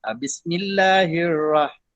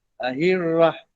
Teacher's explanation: Hirrah jadi terlalu nipis huruf ra. Maksudnya ra ni mestilah huruf yang bergegar lidah.